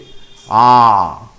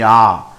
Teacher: আমি যখন আ করছি মুখটা পুরোপুরি খোলা থাকছে আ জিবার ক্ষেত্রে কোন কাজ নেই আ কন্ঠ থেকে উচ্চারণ হচ্ছে আ তাহলে এইটাকে বলা হচ্ছে মুখটা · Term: বিবৃত স্বরধ্বনি